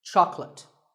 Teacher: make sure that there are only two syllables Chuck and let chocolate and remember there is no late in chocolate speaking of